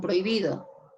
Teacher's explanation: Porque la H no interfiere. Tienes el sonido O y el sonido I. O fuerte y débil se juntan.